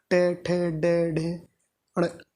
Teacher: जीभ पीछे की तरफ मुड़ के आगे गिरती है